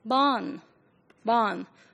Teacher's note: today in England, R is not produced, not in most of the dialects, and of course, not at all in RP, the standard English pronunciation.